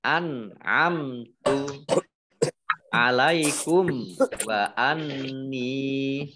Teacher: An'amtu, nun sukun bertemu dengan huruf ain, idhar, dibaca jelas. Mim sukun bertemu dengan huruf ta, ini idhar safawi, juga dibaca jelas.